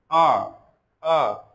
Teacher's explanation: कंठ से, कंठ से हमारा कंठ कंपन हो रहा है